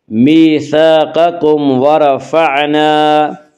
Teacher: ورفعنا کے را کو پر پڑھا جائے گا